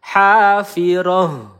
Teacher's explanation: nah ha ini pangkal tenggorokan